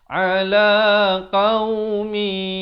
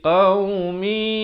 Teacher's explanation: Idgham, memasukkan bi dengan gunnah, dengung. Jadi masuk dengan dengung ataupun masuk beserta dengung. Daripada qaumin jadi qaumi, 2 harakat. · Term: idgham bi gunnah